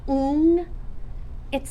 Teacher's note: When I say ing, I'm doing something really weird with my mouth. My tongue never goes up for the N, and I just kind of go, My tongue's hanging out in the middle of my mouth.